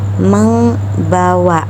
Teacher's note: B merupakan bilabial, sedangkan eng itu merupakan velar. Jadi penyebutannya membawa karena M dan B sama-sama merupakan huruf bilabial.